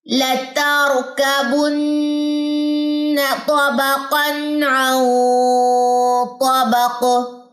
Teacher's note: یہاں پہ غنہ ہوگا کیونکہ نون ساکن کے بعد قا ہے، اخفا ہوگا یہاں پہ